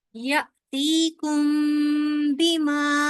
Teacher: मीम के बाद बा आ रहा ना, तो इख्फा शफवी होगा यहाँ पे